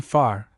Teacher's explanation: The mouth opening should of course be freely shaped for the best sounding of the vowels. For the vowel A, as in far, the mouth is rather fully opened